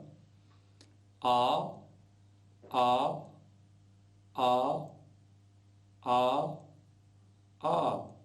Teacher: द्वि मात्रिक होने पर या दो मात्रा वाला होने पर आ कहेंगे या दीर्घ आकार कहेंगे तीन मात्राओं वाला होने पर आ इस प्रकार से उच्चारण करें